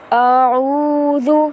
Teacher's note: حمزہ کو ہمیں کھینچنے سے بچانا ہے